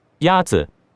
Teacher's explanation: The first tone is a high, level tone.